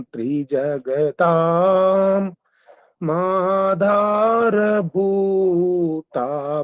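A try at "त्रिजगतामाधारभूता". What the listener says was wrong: महाराज जगताम बोलेंगे ना, जगताम बोलेंगे तो फिर आधार नहीं बोलेंगे, वहाँ आधार बोलेंगे। जगताम बोलने से आधार हो जाएगा, और जगता बोलेंगे तो माधार हो जाएगा।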